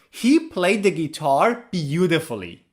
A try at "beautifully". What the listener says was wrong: Beautifully. 4 syllables is not correct. We pronounce it with 3 syllables. Beautifully. Beautifully. Put the stress on the first and third syllable. Beautifully. Flee. Flee is the final syllable. Flee. Beautifully.